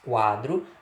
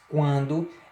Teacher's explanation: Quando você diz quadro, a pronúncia é feita apenas pela boca. Quando você diz quando, existe a pronúncia tanto verbal, tanto pela boca, quanto pelo nariz, pelas fossas nasais